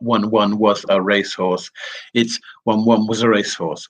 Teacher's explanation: what you're concentrating on here is just a reduction of that was sound